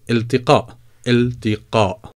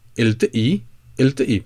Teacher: Well, because it's very difficult to pronounce it, and that's one of the reasons that lots of people, sometimes they would go and pronounce the qaf, and sometimes people would pronounce the qaf as the glottal stop.